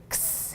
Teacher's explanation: They have trouble pronouncing it, but they do better when we taught them that X is really two sounds squashed together. It's the K and the S, X. And so a lot of times if a child is having a hard time with it, I don't say it, I'm just going and I'm giving them what it is.